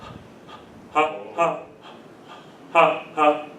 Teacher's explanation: I do 2 little short blows and then I give it a vowel. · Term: letter H